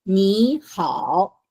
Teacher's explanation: This is second one. If the first word is a third tone, 你 is third tone, and followed by another third tone, 好, you say 你 in as a second tone.